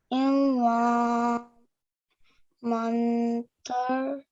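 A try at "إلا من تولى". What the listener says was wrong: Okay, this here is an ikhfa sound, so it's a partially hidden noon. Manta. It's not a man, it's manta. Illa manta walla.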